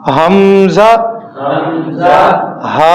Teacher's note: حلق کے نچلے حصے سے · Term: حلقی